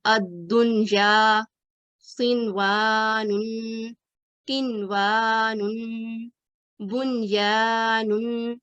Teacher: इसको हमेशा इजहार के साथ पढ़ते हैं, यानी इसमें गुन्ने की आवाज नहीं आती · हमें यहाँ इस जगह पर नून साकिन का गुन्ना नहीं करना, नून को वाज़ेह और क्लियर पढ़ना है।